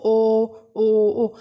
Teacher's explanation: आपके लिप्स की जो शेप है वो बिल्कुल सर्कल बन चुकी है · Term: वृत्ताकार स्वर